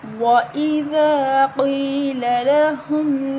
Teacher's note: الف مدہ یا مدہ دونوں کو ایک ایک الف کے برابر لمبا کریں گے، قاف موٹی پڑھی جائے گی